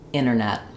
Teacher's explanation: Internet with that T released. or we might drop that T entirely and change it to just the N sound that sounds like internet.